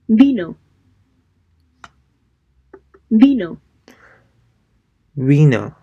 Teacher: pronounced like an English B, in which the lower lip doesn't touch the teeth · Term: BV